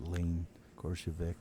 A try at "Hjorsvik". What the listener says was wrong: Yeah, the K is silent. It's Hjorsvik. Lena Hjorsvik.